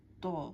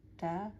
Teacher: ত এর উচ্চারণটা একটু মোটা হবে তা এর মত এত পাতলা না একটু মোটা মোটা বলতে একটু জোর আসবে এটার মধ্যে যেমন ত তা ত পার্থক্যটা আমি বুঝাইতে পারতেছি না।